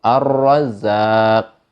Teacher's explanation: Itu contoh ar-ro, bacanya tebal.